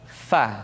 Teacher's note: diucapkan dengan menyentuhkan ujung dua gigi seri kita bagian atas dengan bibir bawah bagian dalam